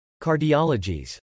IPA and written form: kɑɹdiɑləd͡ʒiz (Cardiologies)